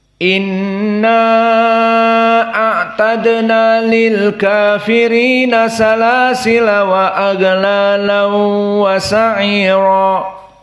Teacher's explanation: mad jaiz munfasil inna a'tadna, maka dibaca tawassut, dibaca dengan 4 harokat. Dan juga di sini salasila dalam keadaan fathah, tarku tanwin, tidak ditanwinkan.